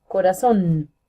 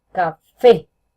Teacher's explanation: tiene la fuerza en la última sílaba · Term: sílaba tónica